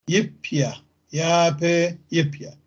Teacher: فيابي تصير يب يا، يب يا. الفتحة الطويلة صارت كسرة قصيرة. الباء الثانية سكنت، أخذت عنها الحركة.